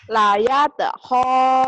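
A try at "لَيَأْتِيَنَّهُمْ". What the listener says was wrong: Bukan bu, bukan ho. Ayo. Mirip go. Ho.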